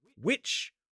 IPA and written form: wɪtʃ (-wich)